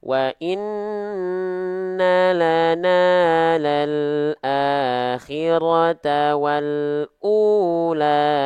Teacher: Mad Thobi'i kita tepat dua harakat enggak kepanjangan enggak kependekan